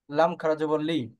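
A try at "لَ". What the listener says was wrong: আচ্ছা, লি হবে কেন? এটা তো জেরের উচ্চারণ। লাম জবর কি হয়? হ্যাঁ, টান হবে না একালিফ।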